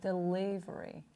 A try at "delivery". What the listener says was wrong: Make the L a little lighter.